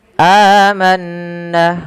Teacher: ada mad badal dua harakat di lafal a manna